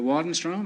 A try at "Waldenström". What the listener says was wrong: No, it's an umlaut on the O. In Sweden, you pronounce the name Waldenström. Waldenström, yes.